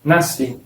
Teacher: la palabra nasci se escribe así, con SC, pero se pronuncia como si fuese solo la S, nasci. No tiene sonido de nasci, tiene sonido de nací.